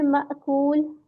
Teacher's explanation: حمزہ ساکنہ پہ جھٹکا ہوتا ہے